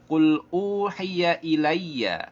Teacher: ilayya pada ya tasydid tidak boleh diberikan adanya gunnah, tidak boleh diberikan gunnah, nggak boleh dibaca ilayya, tak boleh ya.